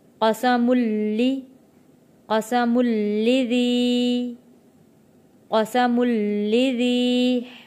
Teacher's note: قسم میم 2 پیش ہیں میم کے اوپر اور میم جڑے گا تشدید والے لام کے ساتھ